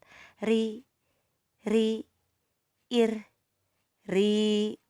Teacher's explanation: Kalau ri itu tipis. Jadi tenggorokan rileks aja. tenggorokan rileks. Lidah tidak diangkat